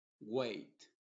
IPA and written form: weɪt (Wait)